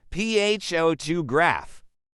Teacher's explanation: in the word photograph, the stress is on the first syllable